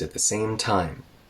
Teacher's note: we rise on same to meet time as we go down there in Pitch so we go up to get to the beginning of T